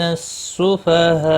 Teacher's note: سفہاء یہاں پر ملانے کی صورت میں مد متصل ہوگا، 4 الف کے برابر کھینچ کر پڑھیں گے، اور رکنے کی صورت میں 3 سے 5 الف کے برابر کھینچ کر وقف کریں گے۔